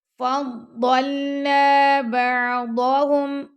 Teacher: عین کو نرمی سے پڑھنا ہے، اس پہ کلکلا نہیں کرنا